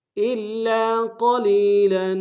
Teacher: قلیلا میں قاف کو موٹا ادا کریں گے